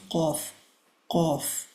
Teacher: it's exactly at the end of the tongue and where the throat meets. So just at the tip of the throat, at the above part of the throat, and then where the tongue ends, that's where we pronounce qaf, qaf.